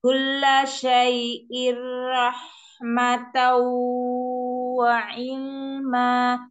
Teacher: Ya, tanwin ke mim ya, mim tanwin ketemu fa diikhfakan. Kemudian tanwin ketemu waw itu diidghom bi gunnah, dimasukkan dan didengung sedikit